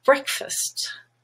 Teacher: breck is red and stressed, but fast now is unstressed and becomes fust, breakfast.